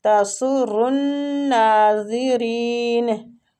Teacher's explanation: रा ज़ेर की वजह से बरीक पड़ा जाएगा